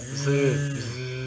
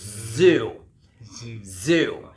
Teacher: Align them like same line, and then try to let the sound out, and make sure that the voice box, we call the voice box here, that bone you got there. If you put your fingers around it, you should feel vibration when you say zzz